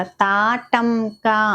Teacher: తాటంక ఇక్కడ టం మీద ఒత్తిడి ఇవ్వాలన్నమాట